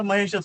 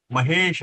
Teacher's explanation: महा अधिक ईश, महेश. हे मराठीमध्ये आपण त्याला महेशच म्हणतो, त्याला आपण दीर्घ करत नाही बोलताना. पण संस्कृतमध्ये तुम्ही जर ऐकलं बातम्यांमध्ये तर ते महेश करतात, कारण ते दीर्घ संधी, पुणे संधी असली तर उच्चार दीर्घ होतो.